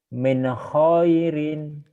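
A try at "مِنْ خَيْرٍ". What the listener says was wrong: Kurang lepas, Bapak kurang Min khairin.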